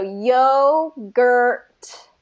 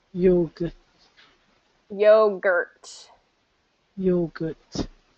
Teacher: you're dropping the t at the end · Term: ending t